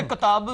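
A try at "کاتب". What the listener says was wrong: कातब नहीं है, कातिब।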